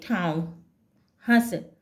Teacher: जब इसका उच्चारण होता है तब हवा मुख के साथ नाक से भी निकलती है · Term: अनुनासिक